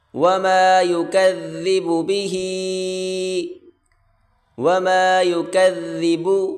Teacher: یکذب به، وما یکذب، چھوٹی کاف اس کو باریک کریں گے، ذال ہلکی سی زبان باہر نکال کر پڑھیں گے